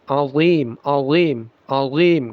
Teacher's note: Jadi dibaca azim, azim ya, tapi dia tebal. Jadi zal yang ditebalkan itulah dha, bukan zai yang ditebalkan.